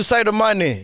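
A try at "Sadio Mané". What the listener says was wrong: Sadio Mane. Ah, you said Saidio. You said Saido. Sadio Mane.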